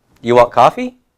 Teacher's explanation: English ones using the do strategy and the other ones not not inverting with do but just making it like a statement but raising the intonation at the end